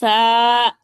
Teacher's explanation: جب زبان کی نوک اوپر اور نیچے والے 2 دانتوں کے درمیان آتی ہے تو سا پڑھا جاتا ہے